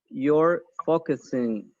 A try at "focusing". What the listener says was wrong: yeah very good